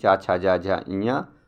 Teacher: च वर्ग में च छ ज झ ञ और य और स आपके तालू से निकलते हैं